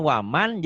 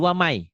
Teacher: Karena nun matinya bertemu dengan ya, maka bunyi nun matinya berubah menjadi ya.